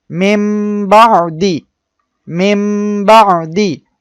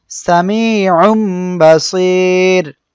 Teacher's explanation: নুন সাকিন বা তানভীনের পরে যখন এই বা অক্ষরটা আসবে তখন আমরা মিম দ্বারা পরিবর্তন করে পড়বো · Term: ইকলাব